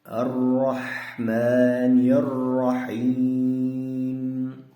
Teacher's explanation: Mana bu ha harflarining ham chiqishiga e'tibor beramiz. Ya'ni tomoq bo'g'ilib chiqyapti.